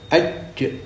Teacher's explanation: Syiddah lawan rokhawah. Syiddah itu suaranya tertahan. Lebih mudahnya kita sukun, kita dului huruf hidup aj, setelah aj ya, sehabis qalqalahnya itu suara sudah tidak mengalir ya. · sehabis qalqalahnya itu suara sudah tidak mengalir ya. tidak bisa dialirkan, walaupun nafas dikeluarkan mendorong tidak keluar suara.